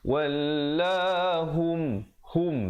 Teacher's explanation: Ramai orang baca hum, ya, yang betulnya hum. Ha baris depan kita bunyikan hu, kita tak baca ho.